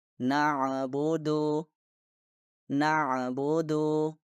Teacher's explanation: menambahkan Qalqalah dengan Sukun dan terdengar seperti ini nabudu nabudu innahuamul Jah Ain bukan bagian